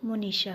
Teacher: अगला है मुनि जोड़ ईशा, यहाँ एक ह्रस्व स्वर है, उसके बाद दीर्घ स्वर आया है, यानी एक ह्रस्व ई है और दूसरा दीर्घ ई है, दोनों मिलकर दीर्घ ई हुए हैं। इस तरह इसका संधि जो वर्ड बन रहा है वो मुनीशा होगा।